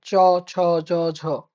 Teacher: জিহার মধ্যভাগের কাজ আছে। জিভ তালুর যে শক্ত অংশটা সেটাকে স্পর্শ করবে। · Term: ঘৃষ্টধ্বনি